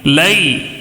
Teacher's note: بالکل نہیں کھینچنا ہے، نرم آواز کے ساتھ جلدی پڑھنا ہے لین کو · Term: یا لین